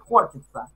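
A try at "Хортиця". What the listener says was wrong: На украинскую хортица. Вот опять у тебя вот это и а, это у вас и я. И я, скажи. Ну, хортица. Да, а тя, я блядь, в конце, после... я, не а, да. А я.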